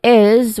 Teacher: So it's not a simple hissing sound, but it is a buzzing sound, meaning that the last sound of this syllable is voiced. So letter Z sound is voiced sound.